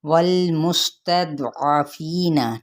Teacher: والمستضعفین، ٹھیک ہے، واو کو جب لام کے ساتھ ملائیں گے تو لام کو ہلائیں گے نہیں، سین پہ سیٹی کو واضح کریں گے، اور دود کو حروف مصالیہ میں سے ہے نا تو اس کو پر پڑھا جائے گا۔